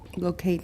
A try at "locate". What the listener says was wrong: I say locate. Locate is not wrong. Locate. Because Kate, if we stress it, it's just too close to another stress. And I say locate anyway.